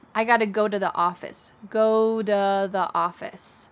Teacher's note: The word to becomes duh. This is very common after the verb go.